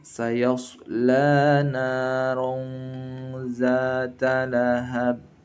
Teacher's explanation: Ron tanwin an ketemu za, berarti ikhfa ya, agak mendengung nanti.